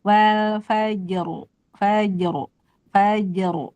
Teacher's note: jimnya ee tipis dan qalqalah rnya tebal jadi jim ee ditarik ya faj gitu kan nih faj kayak senyum ya karena tipis tapi rnya tebal tuh wal fajru fajru fajru jadi faj fajnya mah tipis faj tuh tipis tapi Oh, fajar. · Jimnya tipis dan kolkolah, roknya tebal. Jadi jim ditarik ya, faje gitu kan nih.